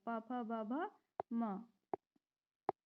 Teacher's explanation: दोनों होठ परस्पर स्पर्श करते हैं और जीव जो है जीवा जो है निष्क्रिय रहती है ओष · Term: प वर्ग, ओष्ठ्य